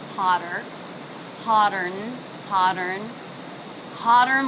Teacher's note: Now the T in hot turned into a flap T or a D sound because it's coming between two vowels.